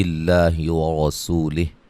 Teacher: لفظ اللہ کے لام کو باریک پڑھیں گے اور را کو موٹا ادا کریں گے، واو مدہ ہے۔